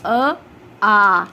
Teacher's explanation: जैसे जब हम अ बोलते हैं, अ किस में आ गया हमारा, ह्रस्व स्वर में। ठीक है, तो जब ह्रस्व स्वर में आप अ बोलोगे, वहीं पे आप जब दीर्घ स्वर में आ बोलेंगे, कैसे बोलते हैं, आ बोलते हैं, तो इसको बोलने में दुगना समय लग रहा है